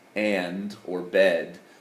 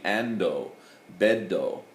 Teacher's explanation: they can't do that final D without a vowel